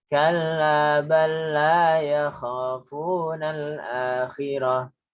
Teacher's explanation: Itu bala nggak ada dengungnya ya. Kalla sekedar double.